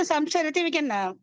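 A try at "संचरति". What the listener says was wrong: Yeah, sancharati, half kind of. We don't put the ma. We don't try to close the lips.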